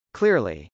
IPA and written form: klˈɪrli (clearly)